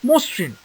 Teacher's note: আদ্য অ এর পরে রিকার থাকলে সেই অ ও রূপে উচ্চারিত হয়।